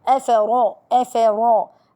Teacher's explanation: الفاء من الحروف المهموسة. الراء جاءت مفخمة لأنها مفتوحة